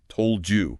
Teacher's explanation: The D sound bumps into the J sound. and it very often transforms into a D sound.